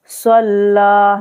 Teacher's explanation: स्वाद को मोटा पढ़ना है, हुरूफ मुस्ताल लिया है, स्वाद लाम जबर सल, लाम खरा जबर ला, सल्ला, ला को खींचना है, खरा जबर को खींचा जाता है, ठीक है।